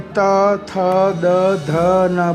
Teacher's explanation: उसके बाद त वर्ग पूरा दंत से रिलेटेड है कि जब त, थ, द, ध, न बोलते हैं तो हमारी जिह्वा दांत के पीछे स्पर्श करती है